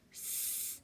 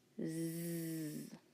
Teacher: sound our s sound and then turn on our voice s our tongue is going to be in the same position as we made our sound and we're just going to turn on on our voice